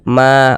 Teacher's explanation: fathah maka huruf yang memiliki tanda baca fathah dibaca panjang sehinganya Ma dibaca panjang Mad thaobii panjang dua harakat